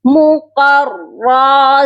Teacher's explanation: موٹا قاف ہے اس کو ہم موٹا کر کے پڑھیں گے، را کو بھی موٹا پڑھا جائے گا